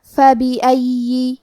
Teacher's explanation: کلمت فَبِأَيِّ میں فا پہ زبر ہے، با کے نیچے زیر ہے اور الف پہ زبر ہے تو ہم یہ تینوں حرکات کو ظاہر کریں گے. آخری میں یا پہ تشدید ہے تو ہمیں 2 حرف کے برابر یا کو پڑھنا ہے اور کیونکہ تشدید زیر کا ہے تو ہم زیر کو بھی ظاہر کریں گے.